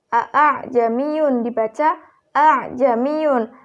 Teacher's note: Dalam ayat ini terdapat bacaan tashhil, yaitu pada kata a'jamiyun dibaca a'jamiyun. Hamzah yang kedua itu dibaca samar.